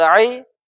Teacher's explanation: یا لین ہے اس لیے اس کو ہم نرمی کے ساتھ جلدی پڑھیں گے